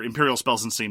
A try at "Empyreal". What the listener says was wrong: Enunciate the E a little bit better.